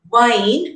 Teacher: ver is a voiced labiodental fricative